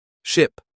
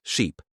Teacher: The I sound in ship is short and relaxed. The E sound in sheep is longer and more tense.